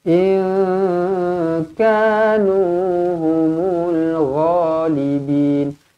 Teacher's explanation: nun kosong bertemu dengan kaf, ikhfa hakiki. Di sini didengungkan dua harokat.